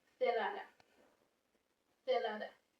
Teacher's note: The letter zeta in standard Spanish is pronounced as a voiceless fricative, the theta sound, whenever it is being followed by vowels like the E or A.